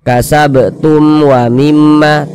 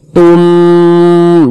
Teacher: wau bukan huruf ba bukan huruf mim maka hukumnya izhar syafawi baca jelas tak berdengung jadi baca pendek saja